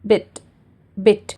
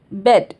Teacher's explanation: जो आपका टंग का पोजीशन रहेगा वो फ्रंट रहेगा और लिप्स का पोजीशन मींस जो लिप्स है वो स्प्रेड रहेगा मतलब वाइडली ओपन रहेगा।